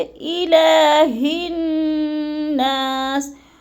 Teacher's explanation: ہا کو موٹا کر کے پڑھنا ہے، حلق کے آخری حصے سے نکالنا ہے